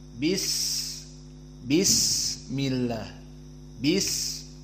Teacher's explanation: dinamakan rakhawah seperti di antaranya Sin misalnya bis bismillah bis maka di saat disukunkan Sin ada desis yang keluar dari suara maka di sini menunjukkan bahwa dia sifatnya bukan syiddah tetapi rakhawah